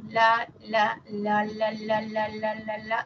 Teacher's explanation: cuando decimos La La La La La y repetimos o decimos ra nuestra lengua se acerca a la zona de los alveolos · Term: sonido alveolar